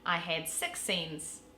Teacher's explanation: the short i sound is the most different between the new zealander and the australian accents because yours sounds like our schwa